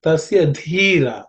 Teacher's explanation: Dhi again is the fourth letter in the tha varga, so it has to be aspirated.